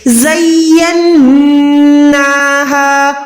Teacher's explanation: آواز کو ناک میں لے جا کے 1 سیکنڈ رکھنا ہے، وہاں پر ہم زینہا نہیں پڑھ سکتے، نون کو ہم نے ہولڈ کرنا ہے، زینہا۔ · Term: گننا